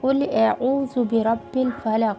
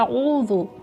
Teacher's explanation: क़ाफ़ को गोल पढ़ना है और हमज़ा और आइन अलग अलग अदा करने हैं। क्या इसमें हम लोग मिस्टेक करते हैं, औज़ु कह देते हैं, यानी कि हमज़ा जो अलिफ होता है और आइन उसको एक ही आवाज़ में पढ़ देते हैं।